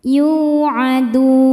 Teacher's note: yuadun ketika berhenti di dun hukumnya mad arid lisukun karena mad thobi'i bertemu dengan huruf yang disukunkan karena waqaf mad tha thobiinya wau sukun sebelumnya baris dhammah huruf yang disukunkannya huruf nun maka dalnya panjang boleh dua atau empat atau enam harakat asal konsisten dalam sekali baca